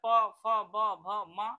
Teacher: प, फ, ब, भ, म और इसके बाद छोटा उ और बड़ा उ आपका जो है यह ओष्ठ प्रकार के अंतर्गत आते हैं